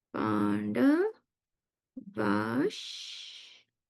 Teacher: The visarga changes into a sh halant.